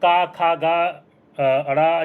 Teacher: क, ख, ग ण ये कंठ के हैं